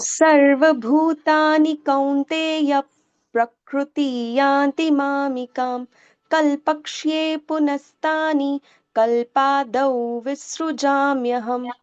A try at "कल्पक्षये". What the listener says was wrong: माता जी देखो, कल्पक्षय, यहाँ पे आपका उच्चारण में थोड़ी सी त्रुटि है। कल्पक्षय, क्योंकि क्ष है ना, क्ष, ये संयुक्त वर्ण है ना, संयुक्त अक्षर है ना, ये हमारा वर्णमाला का संयुक्त है, ये जोड़ा अक्षर है, ये दो से बनता है, आधा क और षटकोण वाला श।